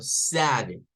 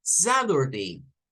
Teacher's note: La flap T consiste en que cuando la T está en medio de vocales, o sea, está una letra T y a sus lados hay vocales, ellos vienen y cambian el sonido de la letra T, de la T, y la cambian, a veces suena como una R y a veces suena como una D. No les puedo decir es una R, es una D, es como algo intermedio realmente. De forma que usted a un estadounidense, esto lo va a escuchar decirlo como sad y no como sat, sad.